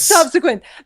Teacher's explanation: The emphasis is on sub.